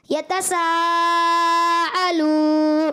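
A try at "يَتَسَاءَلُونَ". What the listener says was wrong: अलू, आइन की आवाज आ गई है भाई।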